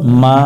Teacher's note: জবরে বামে খালি আলিফ, এক আলিফ টানতে হবে, এখানে এক আলিফ টান দিব।